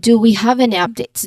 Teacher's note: the stress here is on any and then shifting to updates because it highlights what you're looking for